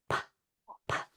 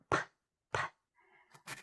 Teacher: All the sound is actually coming through my mouth. So we call that voiceless because we're not using our voice box. We're not vibrating our vocal cords. What's happening when I make a P or a P sound is the air is just coming through. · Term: voiceless consonant